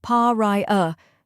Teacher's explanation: Finally, we have a soft, unstressed sound, like the A in sofa.